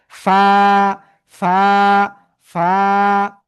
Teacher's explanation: নিচের ঠোঁটের পেট উপরের দুই দাঁতের আগার সাথে লাগিয়া হালকা বাতাস বের করিয়া এক আলিফ টানিয়া উচ্চারণ করব, ফা ফা ফা। ঠিক আছে?